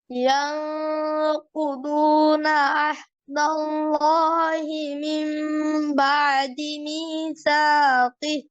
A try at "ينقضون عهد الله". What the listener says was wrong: আহদটা clear হয়নি। কফ কিন্তু মোটা হচ্ছে না, আরো মোটা হবে, আপনি এটাও মার্ক করে নিবেন।